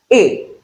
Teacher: When you say a, your lips are unrounded. So that is unrounded vowel sound.